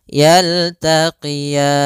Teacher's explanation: Sama sebagaimana kita membaca tukadziban, itu ada bacaan mad arid disukun, boleh dipanjangkan 2 harokat, boleh 4 harokat, dan boleh pula 6 harokat.